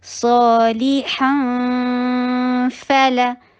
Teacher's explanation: ہم نون کو منہ سے پروناؤنس ہی نہیں کریں گے, اور ہمارے ناک میں آواز ہوگی. بس ناک میں آواز جو ہے خیشوم والا اور گنہ کا جو خصوصیت ہے وہ باقی ہے. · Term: اخفا